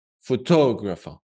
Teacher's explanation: We're gonna place the stress on tog